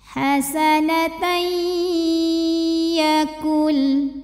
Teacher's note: Lalu berikutnya ada hukum idgham bil gunnah karena ada tanwin fathah yang menghadapi huruf ya. Maka tanwinnya masuk ke ya, hasanatai, dan tahan sampai berasa ke hidung.